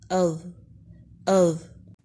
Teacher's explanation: حمزہ زبر ذا ساکن اذ اذ۔ زبان کی نوک اوپر والے سامنے کے دو دانتوں کے سروں سے لگ رہی ہے اور ذرا باہر کی طرف نکل رہی ہے۔ ذا کو بلند اور موٹا پڑھیں گے، ذا ذا ذا۔ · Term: ذا کا مخرج